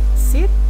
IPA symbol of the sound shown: s